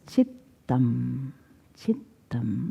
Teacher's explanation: When there is a double T, you hold it longer.